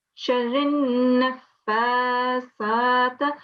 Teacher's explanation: You have to keep the sound of the Nun for 2 seconds in your mouth and then let go of it. So the nasal sound that you have, you need to keep it for 2 seconds. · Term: Nun Ghunna